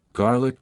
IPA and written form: ˈɡɑːrlɪk (Garlic)